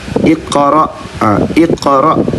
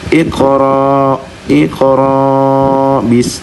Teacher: Jadi huruf hamzah itu berupa gertakan.